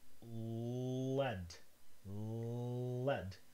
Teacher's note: That's a lateral approximant, again, because the tongue goes front and sideways, lead, so that the air only rushes out from one direction